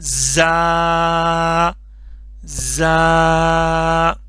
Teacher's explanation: गया जा जा ठीक है इसमें यह सीन की तरह है सीटी की आवाज आएगी थोड़ा सा सख्ती के साथ पढ़ेंगे ठीक है ल का इसमें साउंड नहीं बनाना पतला करके नहीं · سین کی طرح ہے، سٹی کی آواز آئے گی، تھوڑا سا سختی کے ساتھ پڑھیں گے